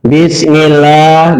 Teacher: lamnya lam jalalah dibaca tartik karena huruf sebelumnya berharokat kasroh. Ya, kemudian lahnya panjang 2 harokat namanya matobai.